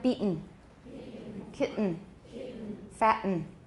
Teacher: Probably most Americans and many British speakers have a glottal stop followed by a syllabic nasal in words such as beaten, kitten, fatten.